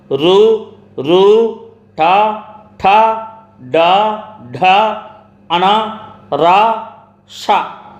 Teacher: నాలుకతో గట్టిగా అంగిలిని తాకుతూ పలికే అక్షరాలు రు, రు, ఠ, ఠ, డ, ఢ, అణ, రా, ష మూర్ధన్యాలు.